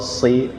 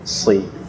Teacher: Shi tengah, kalau si ujung.